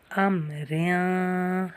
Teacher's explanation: ام ریاں، را کو ہم باریک پڑھ رہے ہیں کیونکہ اس کے نیچے دو زیر ہیں، دو زیر، دو پیش اور دو کھڑی زیر کی وجہ سے ہم را کو باریک پڑھیں گے، اس لیے یہاں پہ ہم اس کو باریک کریں۔